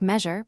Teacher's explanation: note the voiced ZH sound, like measure, produced with the front of the tongue